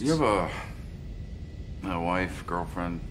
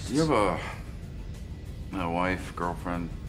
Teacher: a wife girlfriend notice that when says you have a he doesn't pronounce the h in have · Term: connected speech